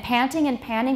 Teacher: panting and panning being pronounced in the same way for these speakers